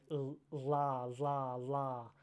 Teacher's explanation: the air is going around my tongue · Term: lateral